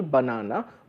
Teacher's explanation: Suppose the word banana has an accent on the second syllable, banana, b is smaller, nana is bigger.